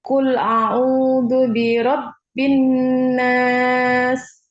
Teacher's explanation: Didengung lagi dikit ya huruf nun.